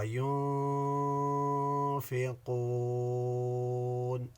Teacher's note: ينفقون میں یہاں نون ساکن کے بعد فا ہے، یوں اخفا ہوگا